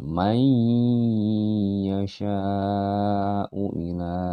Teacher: Idgham bi gunnah. Jadi nun matinya langsung melebur ke dalam ya-nya